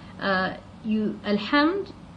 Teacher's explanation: It's a moon letter actually, and so the lam will become a moon letter. It will be pronounced and not dropped from reading.